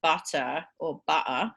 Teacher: in british english we don't have this so if we say butter or butter we just say uh at the end and that is that little unstressed schwa